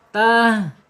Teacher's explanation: makhrajnya ha adalah di al khalq ya, bagian bawah, tenggorokan bagian bawah